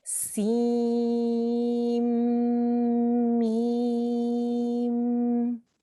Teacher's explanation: Okay, so we don't say seen, meme. We drop the N at the end of seen and we join it straight to the meme. So we'd say seen, meme.